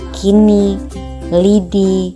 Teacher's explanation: direalisasikan sebagai bunyi I tinggi atas depan tak bundar apabila berada pada silabel terbuka atau silabel tak berkoda seperti pada kata kini lidi dan yang